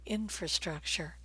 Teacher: the word infrastructure is stressed on the first syllable